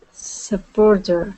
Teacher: Now, remember, with that T at the end of supporter, okay, instead of saying supporter and pronouncing that as a T, we would pronounce that as a D